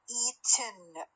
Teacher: لأن الtongue doesn't move in the ten sequence, but the soft palate is lowered at the end of the T. فلذلك compressed air escapes through the nose. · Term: syllabic one